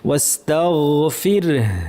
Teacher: গয়নটা আমরা আওয়াজটাকে জারি রাখার চেষ্টা করব, গয়নে ভারী আওয়াজ এবং জারি থাকবে।